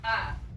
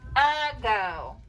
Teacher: good two syllables so that first syllable is our thinking syllable that first syllable is thinking a but we say uh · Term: schwa